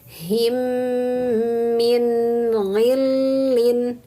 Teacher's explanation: Untuk membaca mim tasydid maka tahan dan dengungkan 3 harokat.